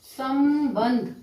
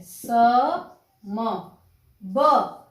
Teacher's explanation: इस अनुस्वार के बाद आता है ब, और ब वर्ग का पंचमाक्षर कौन सा है? म, इसलिए उसका उच्चारण म के रूप में होता है।